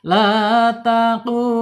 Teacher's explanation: qop ini secara makhraj ada di alisan di pangkal lidah pangkal lidah yang paling pangkal yang paling ujung banget pangkal berarti kan ini terangkat dia terangkat kemudian menyentuh depannya lawannya yaitu langit-langit yang mempunyai anak lidah a gitu ya. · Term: qof